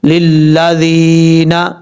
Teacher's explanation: یا ساکن سے پہلے زیر ہے، ایک الف کی مقدار، اس کو لمبا کر کے پڑھیں گے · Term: یا مدہ